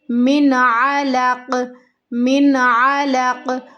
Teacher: میم کو ہمیں لمبا نہیں کرنا، غنہ نہیں کرنا، یہاں پہ اظہار ہوگا